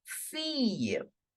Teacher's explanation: I am specifically saying that I and E. Whenever the two L are between I and E, we always have to change the sound of 2L to Y.